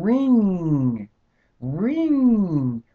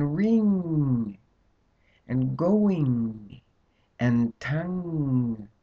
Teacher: can you feel yourself pushing that flow of air up in through the nasal passages tongue Can you feel it it's the tongue pushes that sound